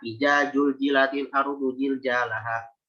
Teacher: Jim itu di mana makhrajnya? Di wastul lisan, di tengah lidah.